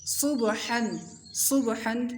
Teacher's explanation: صاد کی آواز موٹی اور سیٹی والی ہوگی، با کو ہلانا ہے، حا کی آواز حلق سے نکلے گی، ضاد کی آواز موٹی ہوگی یہاں پر، اور حا کی آواز حلق سے نکلے گی، عین کی آواز حلق سے نکلے گی، اور با پر قلقلہ کریں گے جیسے یہاں پر کیا۔